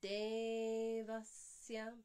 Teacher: this E is a 2-count vowel and the A is only a 1-count vowel. So it's Devasya, not Devasya or Devasya.